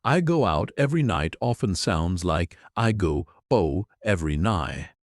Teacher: your tongue touches the roof of your mouth to start the sound, but the air never actually comes out.